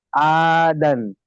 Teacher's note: দান টান দিতে হবে, আলিফ মাদ্দা তো।